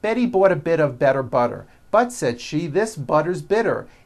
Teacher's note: notice that you do not hear any t sounds they're only d's d which are voiced